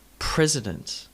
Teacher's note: President, with emphasis on the first syllable.